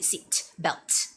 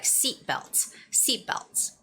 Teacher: And also when you're saying the word seatbelts, actually you don't really have to say seat belt, okay? So you sort of like make that T a silent sound. It's more like seatbelts.